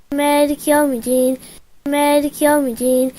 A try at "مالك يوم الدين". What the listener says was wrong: Ce n'est pas Malik Yawmiddin. Non, Malik Yawmiddin. Ad-Din. Au-dessus de la lettre Dal, il y a ce qu'on appelle Shadda. Ad-Din. Ce n'est pas Malik Yawmiddin. Non, Malik Yawmiddin.